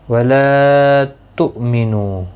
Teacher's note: وَلَا تُؤْمِنُوا، لا الف مدہ ہے، ایک الف کی مقدار کے برابر کھینچ کر پڑھیں گے. حمزہ ساکن کو جھٹکے کے ساتھ ادا کریں. وَلَا تُؤْمِنُوا، نو مد منفصل ہے، حرف مدہ کے بعد حمزہ بشکل الف آیا ہے، مد منفصل لگی ہے.